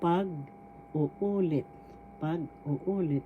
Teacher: Let review tagalog retel or reiterate paguulit pag uulit first syllable pag second syllable u third syllable u fourth syllable lit the accent is in the third syllable